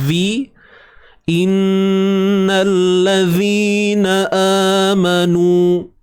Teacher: huruf zal keluarkan sedikit hujung lidah kita